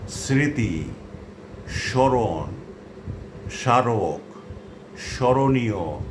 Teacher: যদি শব্দের প্রথম ব্যঞ্জন বর্ণের সঙ্গে মফলা যুক্ত থাকে তাহলে সাধারণত তার কোনো উচ্চারণ হয় না। তবে প্রমিত উচ্চারণ রীতিতে মফলাযুক্ত বর্ণটির উচ্চারণে খানিকটা নাসিক্য প্রভাবিত হয়, অর্থাৎ একটুখানি নাকিস্বরে উচ্চারণ হয়।